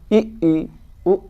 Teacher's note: वे स्वर जिनके उच्चारण में मुख न के बराबर खुलता है, अर्थात बंद सा रहता है। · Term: संवृत्त स्वर